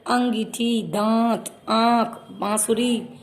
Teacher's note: अनुनासिक ध्वनि जो नाक और मुख दोनों से बाहर निकलती है